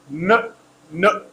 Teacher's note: air is blocked in the mouth but comes from the nose because that's a nasal sound